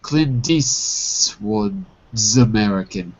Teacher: because we dropped the T in Eastwood, the S is a little longer.